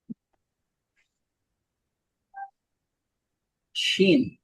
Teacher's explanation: জিহ্বার মধ্যখান তার বরাবর উপরের তালুর সঙ্গে লাগে।